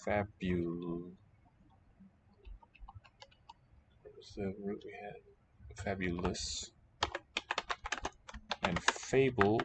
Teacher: the nice polished close to the original spelling pronunciation in fabu fabulous and fable with the characteristic english shift of the long a sound fabulous so the conservative one is the one on the left